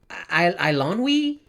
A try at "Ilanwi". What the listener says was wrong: No, it's more of an A. AI is a diphthong that's pronounced like an A, or A, and then W is like an O in the Welsh language.